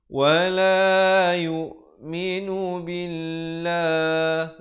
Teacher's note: Lafzul jalalah dibaca nipis dengan 2 harakat.